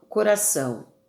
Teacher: coração, onde o O vai funcionar como uma semivogal